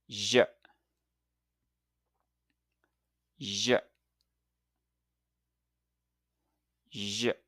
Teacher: the j sound is made similarly to the sh, but with a little voice added. It's like a buzzing or humming sound. Put your tongue near the roof of your mouth, just like the sh, but this time add your voice to create a soft buzzing sound like j.